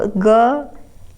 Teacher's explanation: होता है ख अघोष होता है महाप्राण होता है सघ ग सघोष होता है अल्प प्राण होता है